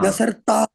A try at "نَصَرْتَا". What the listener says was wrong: نہیں، ناصرتا، را کو ساکن نہیں کریں گے یہاں پہ.